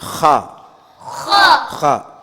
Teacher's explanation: ஹா என்பது தொண்டையில் ஏதாவது முள் ஏதாவது மாட்டிக்கிட்டா எப்படி காருவோமோ அது போன்று காரி சொல்லணும்